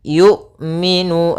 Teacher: ketika melafalkan hamzah itu tidak ada nafas yang dialirkan dan tidak ada pula suara yang dialirkan, tapi dia suaranya tertahan dan nafasnya tertahan